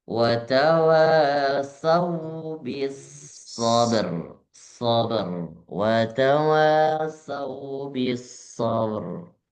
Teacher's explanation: Jadi jangan sampai ada jeda sabr. Nah itu jadi qalqalah akbar nantinya.